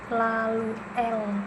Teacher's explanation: ujung lidah menyentuh alveolar ridge, udara keluar di samping lidah. Bunyinya itu lateral bersuara